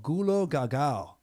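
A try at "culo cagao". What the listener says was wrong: Culo with a C.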